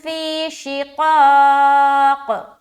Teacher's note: یا ساکین اور اس سے پہلے زیر، یا مدہ ایک الف کھینچنا، شین زیر شی، قاف الف زبر قا اور قاف دو زیر قین۔